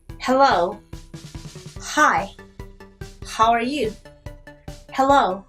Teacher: 그 8개는 다 짝꿍이 없는 애들이에요. 그 중에 하나는 무성음 H 소리가 나는데요. 유성음 짝꿍이 없어요.